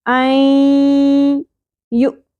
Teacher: الا این، نون ساکن کے بعد نون ساکن کے بعد یمنو میں سے یا آ گیا، ادغام مع الغنہ، ہم نے ملاتے ہوئے پڑھنا ہے نون اور یا کی ساؤنڈ کو، اور یہاں پر ہم نے غنہ بھی کرنا ہے